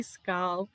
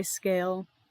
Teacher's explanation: the vowel, the A, has a little backward accent on it. That means you drag out the vowel.